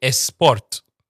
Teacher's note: Spanish speakers and Arabic speakers they say es. So they don't say sport, they say esport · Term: lead in